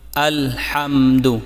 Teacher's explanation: یہاں حا حرف حلقی ہے، اسے حلق کے درمیانی حصے سے رگڑ کر نکالیں تاکہ یہ ہا سے الگ ہو جائے۔ لام پر آواز کو واضح رکھیں اور دال کی پیش کو بالکل لمبا نہ کریں تاکہ واو پیدا نہ ہو، یعنی ایسے مت پڑھیں الحمدو، ایسے نہیں پڑھنا بلکہ الحمد۔